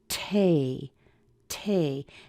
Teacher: make it bigger make it stronger the T has a little extra air coming out with it too